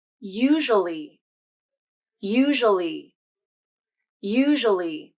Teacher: I will often drop the w sound from this pronunciation to simplify it even more.